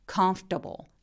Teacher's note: 미국식으로는 comfortable이 아니라 중간에 있는 OR을 아예 발음을 안 해서 comfortable 이라고 발음합니다.